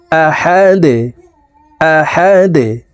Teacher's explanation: দালকে এখানে এইভাবে থামবো। দাল যেহেতু কলকলার হরফ, নিচের দিকে ধাবিত করে ধাক্কা দিয়ে সাকিন করে ফেলবো।